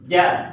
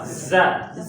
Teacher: Kalau ja tengah lidah naik nempel ke langit-langit.